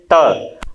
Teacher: हम त बोलते हैं तो हमारी जिह्वा जो होती है वह कहां स्पर्श करती है? हमारे दांत पे स्पर्श करती है।